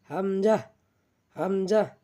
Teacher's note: হামজাও আমরা হলকের শুরু হইতে উচ্চারণ করব